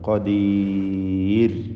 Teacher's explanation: റാഇന് തർഖീഖാണ് എന്നത് പ്രത്യേകം ശ്രദ്ധിക്കുക. റാഇനെ നേർപ്പിക്കണം.